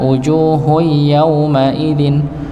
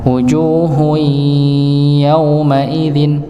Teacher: Tapi kalau namanya idgham bighunah masuk dengan dengung maka di ditahan.